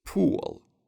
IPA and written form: pul (pool)